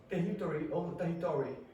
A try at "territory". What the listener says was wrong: Territory. Yes, it's because you keep pronouncing the R's as a H.